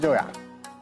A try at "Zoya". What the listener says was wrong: No. It's not Joya. It's Zoya from Z. No, Zoya. So simple. Zoya. Zoya.